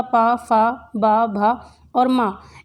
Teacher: इनको उच्चारण करने में आपके जो होठ हैं, आपके ओष्ठ हैं, एक दूसरे से टच होते हैं, इसलिए ये ओष्ठ ध्वनि के अंतर्गत आते हैं।